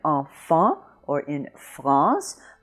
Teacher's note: it's the same sound that you have in enfant or France, the nasalized an